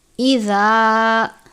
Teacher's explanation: اذا، الف سے پہلے زبر ہے الف مدہ، زال ہے، ہمیشہ نرمی سے پڑھتے ہیں، جھٹکا دے کر یا سختی سے نہیں پڑھنا، زال کو زا کی طرح بھی نہیں پڑھنا اور زال کو زوا کی طرح بھی نہیں پڑھنا۔